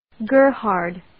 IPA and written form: 'ɡɝr,hɑrd (Gerhard)